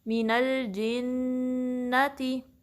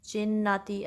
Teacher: जिम में ख्याल रहे कि आपकी जो चा की साउंड है वो ना आए, जिन्नाती ऐसा नहीं, इसको अवॉइड करने की कोशिश करनी है।